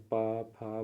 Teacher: होंठ व्यंजन में हमेशा दोनों होंठ आपस में जुड़ जाते हैं